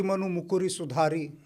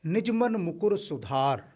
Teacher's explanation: जब भी ह्रस्व उ और ह्रस्व ई की मात्रा आती है अंतिम शब्द में, उसका लोप हो जाता है